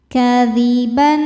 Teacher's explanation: Ban ada izhar halqi karena ada tanwin fathah berhadapan dengan huruf halqi atau tenggorokan yaitu hamzah. Cara baca tanwinnya ini jelas. · Kadziban au ada harfulin karena ada wau sukun sebelumnya fathah dibacanya lembut atau lunak